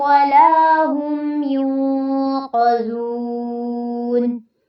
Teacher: ولا ہم میں لا پہ مد اصلی ہے، ہم یوں پہ آپ نے اخفا کرنا ہے، ناک میں آواز جائے گی۔